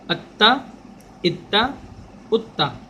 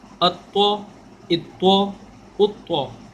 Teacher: دونوں میں فرق ہے, تا باریک طو موٹا.